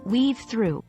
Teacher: it's important to note the smooth flow in saying weave through the v in weave flows naturally into the T of through making it almost sound like one continuous word